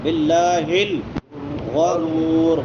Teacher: زبر آئے پیش آئے تو پھر پر ہوتا ہے، باللہ الغرور، غین موٹی، را بھی موٹی اور وقف والی را بھی موٹی ہوگی